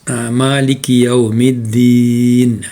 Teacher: Da itu lidah, hujung lidah kita terkena kepada gigi depan atas.